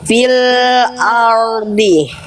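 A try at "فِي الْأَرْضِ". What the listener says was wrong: Nah, rohnya jangan jadi nuansa Eropa, ya. Jangan ada nuansa-nuansa Eropa. Getarannya tetap ada R. Ardi. Itu masih R gitu ya. Harusnya ada getarannya.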